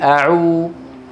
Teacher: اقصى اللسان مرتفع والشفتان مضمومتان الى الامام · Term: الواو